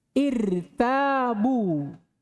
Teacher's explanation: Ra dibaca tebal kalau ra disukun dan sebelumnya hamzah wasal malfudatan au muqaddaratan.